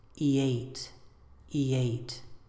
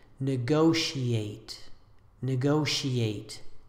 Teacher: This final word is usually pronounced with four syllables, ending in the two syllables e and eight